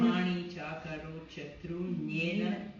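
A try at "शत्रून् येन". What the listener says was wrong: No, chatrun comes, that yin comes with the previous word. Pause there and say it, yena. Chatrun, yena.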